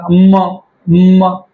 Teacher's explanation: ज्या अनुनासिकांचा उच्चार करताना आपले ओठ हे एक दुसऱ्यांवरती येत असतात आणि हवा ही नाकावाटे बाहेर सोडल्या जाते त्या अनुनासिकांना ओष्ट अनुनासिक म्हणतात ट्राय करून बघा म दोघ एक